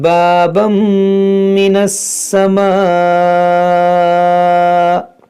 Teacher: یہاں تنوین کے بعد میم ہے، یہاں پر ادغام ہوگا